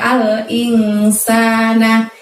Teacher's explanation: Kemudian ada al-insana. Di situ kita bacanya samar dan dengung karena ada nun mati bertemu huruf sin. Sa panjangnya 2 karena ada mat asli.